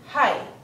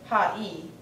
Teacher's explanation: the first vowel shrinks and becomes sandwiched between the top consonant and the second vowel, as you see in this word, h, a, I, which makes hi instead of ha-I. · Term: a diphthong